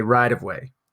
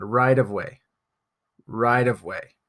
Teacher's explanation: change the T pronunciation to a d so we'll say rideway it's kind of a very light T soft D sound